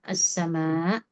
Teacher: Wassama dikonsistenkan panjang. Mad wajib ya. As-sama. Itu perlu dikonsistenkan 4 atau 5 harokatnya ya.